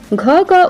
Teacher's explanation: घ का उच्चारण स्थान कंठ है।